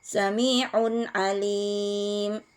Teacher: Samiun Alim Samiun Alim ada tanwin bertemu dengan huruf Ain maka hukum tajwidnya adalah izhar dibaca jelas tanpa dengung